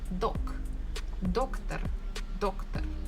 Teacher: I can hear that stress falls on the first syllable